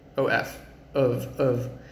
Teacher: So the word of, OF, is spelled with F, but it has a V sound.